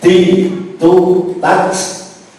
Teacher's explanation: ujung lidah terkena pangkal gigi, bongkote gigi, kemudian ke atasnya kena gusi. Artinya ujung lidah jangan kelihatan, jangan keluar.